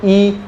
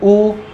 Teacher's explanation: संवृत स्वर आता है, मुख लगभग आपका बंद रहेगा